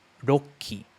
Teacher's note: the R is kind of rolled, but not fully rolled